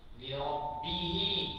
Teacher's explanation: Qasirah tu pendek. Sebab apa pendek? Sebab baca dua harakat saja. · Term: maksilah qasirah